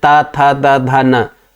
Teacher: सबसे पहले जीभ जाकर दंत को टच कर लेती है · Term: स्पर्श